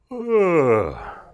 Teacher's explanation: when we yawn, we actually start with a fairly high pitch. And you run through a big part of your vocal range. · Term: vocalized yawning